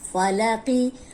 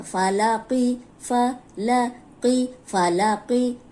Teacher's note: اب یہاں صرف قوف موٹا ہے، اس کا دھیان رکھنا ہے۔ فالاقی، اب لام کو موٹا نہیں کرنا، فالاقی، تو اکثر ایسے ہوتا ہے کہ موٹے حرف کے ساتھ آگے پیچھے جو حرف ہوتا ہے وہ بھی موٹا ہو جاتا ہے، اس کو موٹا ہونے سے بچانا ہے۔